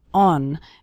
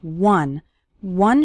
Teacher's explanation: the word one starts with the W sound okay some students pronounce it like on but that's not correct